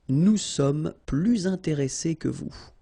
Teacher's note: you make this little link, little liaison between the two, so you hear a little bit this S. Okay, nous sommes plus intéressés que vous.